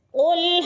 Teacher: قاف موٹے حروف میں سے ہے، پر کر کے پڑھیں گے